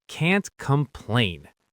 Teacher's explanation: The T stops the air completely. · Now let's link it together. The key is that hard T sound that cuts off.